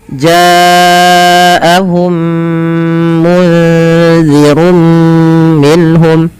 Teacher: Pada lafal ja panjangkan huruf ja di sini sepanjang empat atau lima harakat. Karena adanya bacaan mad wajib muttasil pada fal jaahum.